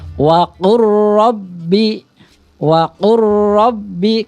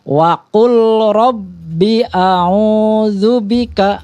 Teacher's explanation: jadi idgham yang tidak didengungkan hanya ditekan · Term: idgham bila gunah